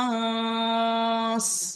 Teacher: নুনের উপরে তাসদিদ থাকলে সেখানে নুনটাকে এক আলিফ পরিমাণ গুণনা করতে হবে